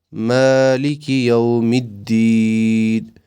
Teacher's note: میم پر کھڑا الف ہے اس کو تھوڑا لمبا کرنا ہے